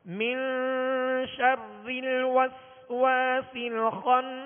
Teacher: نون ساکن کے بعد حرف شین حرف اخفاء میں سے، لہذا ایک الف کی مقدار میں غنہ کر کے پڑھیں گے ، من شر الوسواس الخناس، واؤں کی ہونٹوں کی گلائی سے